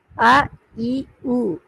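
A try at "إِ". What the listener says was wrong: அ இ உ பிள்ளை அ இ உ பிள்ளை. நீங்க இன்னும் இ என்றதை உச்சரிக்க, நீ யாவை தான் உச்சரிக்க, ஈ என்று தான் உச்சரிக்கிறீங்க. கஸ்ரத்துன்ற உச்சரிப்பு ரெண்டு இருக்குது. யாக்கு கஷ்டத்தை வச்சு உச்சரிச்சா வர சவுண்ட் இருக்குது ஈ என்று அலிஃபு கஷ்டம் வச்சு வர உச்சரிப்பிக்கிற ஈ அப்ப ரெண்டுக்கு வித்தியாசம் இருக்குது ஈ ஈ நீங்க ரெண்டு உச்சரிக்க ரெண்டு ஒன்று தான் முதலாவது உச்சரிச்சது ரெண்டாவது உச்சரிச்சது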